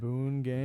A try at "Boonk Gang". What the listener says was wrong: Boon. It's like Boonk. B-O-N-K. Boonk Gang. B-O-N-K. Gang. Boonk Gang.